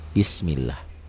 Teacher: lafaz Allah dibaca tipis kalau sebelumnya baris di bawah